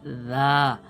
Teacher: জিহ্বা কেটে নিয়ে আপনি সামনের যে দুটো দাঁত রয়েছে দাঁতের মাথায় লাগাবেন, তাহলে উচ্চারণটা সঠিক হবে রা।